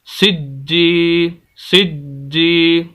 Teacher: سخت بھی کر رہے ہیں اور آواز کو ہلکا سا روک بھی رہے ہیں، سانس نہیں توڑنا لیکن آواز کو ہلکا سا روکنا ہے تھوڑی دیر کے لیے، سجی۔ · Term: شد